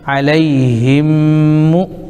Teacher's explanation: میم ساکن کے بعد میم آ رہا ہے اس لیے یہاں پر ادغام ہو جائے گا، یعنی ایک میم کو دوسرے میم میں ملا کر کے پڑھیں گے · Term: ادغام شفوی